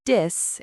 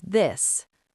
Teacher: So people might say dis instead of this. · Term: th sound